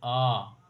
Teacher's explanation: विवृत, पूरा मुख खुला रहेगा, पूरा मुख खुलना